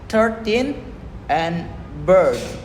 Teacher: this sound is the long form of the schwa sound. It's found in words like 13 and bird.